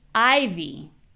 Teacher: Well, in this case, your voice, your voice is higher. The vowel sound is super clear. In this case, it's I. And that vowel is a lot longer. So, I is a lot longer than E.